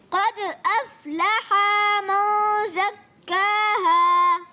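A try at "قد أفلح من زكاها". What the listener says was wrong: آپ نے بھی وہی غلطی کی کہ ہا کو کھینچیں گے نہیں. ہا کی زبر جو ہوتی ہے نا اس کو بغیر کھینچے جلدی میں. قد افلح من، لح من، جلدی میں. قد افلح.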